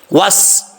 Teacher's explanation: سین میں سیٹی آئے گی